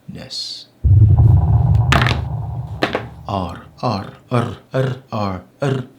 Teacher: a trilling at the top of the mouth with the tongue it's closest in some senses to the Spanish R but this